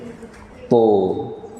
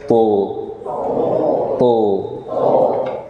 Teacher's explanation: jadi ujung lidah menempel dengan pangkal gigi seri atas dan pangkal lidahnya naik, isti'la. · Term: huruf ujung lidah